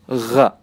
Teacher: Terasa di ujung tenggorokan seperti menggetar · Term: adnal halqi